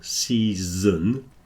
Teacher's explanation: starts with a s long e sound and then a z in the Middle